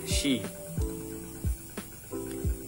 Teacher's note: Ujung lidah di belakang gigi bawah dan daun lidah menyentuh bagian depan langit-langit mulut, tepat di belakang punggung alveolar. Seperti yang ini berbeda, seperti gabungan huruf SH, she.